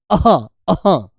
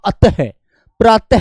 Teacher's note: विसर्ग में दो बिंदी जो लगती हैं उनकी आवाज बेटा कंठ से निकलती है